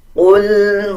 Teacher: قاف کو پر یعنی موٹا پڑھا جائے گا